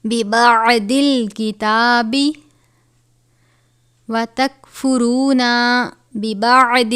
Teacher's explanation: عین کو باریک پڑھتے ہیں، ضاد کو پر پڑھا جاتا ہے